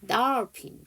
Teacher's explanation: 네오포드가 아니에요. 자 D는 디귿이고 여기서 O는 강세 받아서 아발음이고 장모음이에요. 콜론을 찍으면 제가 장모음이라고 했어요.